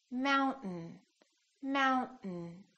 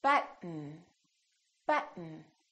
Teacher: and the vowel disappears so we say Mountain don't say Mountain don't release your tongue keep it up and just go directly to the n mountain mountain let's try a few more words don't say button